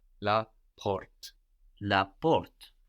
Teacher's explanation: The door in French is la porte, P-O-R-T-E. And this R kind of goes a bit in the throat in French.